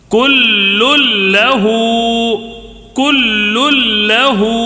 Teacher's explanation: ادغام بلا غنے کے ہوگا، کیوں؟ اس لیے کہ لام اور را میں غنہ نہیں ہوتا ہے، بقیہ چار حرف میں غنہ ہوتا ہے، یہ دو حرف میں غنہ نہیں ہوگا، ٹھیک ہے۔